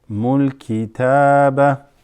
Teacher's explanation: وَيُعَلِّمُكُمُ الْكِتَابَ. The ta is extended there. Mul kitaba.